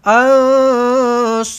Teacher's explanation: Ikhfa hakiki. Nun kosong bertemu dengan sad. Dengungkan ansarullah.